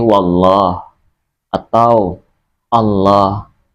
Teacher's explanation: Kalau dia lam tafkhim, maka dia membacanya harus tebal seperti wallah atau Allah didahului dengan dhommah atau fathah harakatnya.